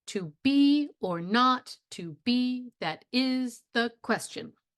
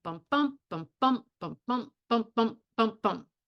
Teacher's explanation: an unstressed and then a stressed word